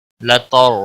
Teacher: را ساکن سے پہلے زبر ہے اس لیے را کو پر پڑھا جائے گا